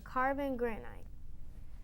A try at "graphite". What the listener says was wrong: Oh, not quite. Not quite. It is graphite. Graphite. You were saying granite. I think you were trying to say granite maybe, but graphite was the correct pronunciation of that.